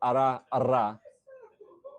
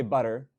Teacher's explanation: what's called an alveolar tap or an alveolar flap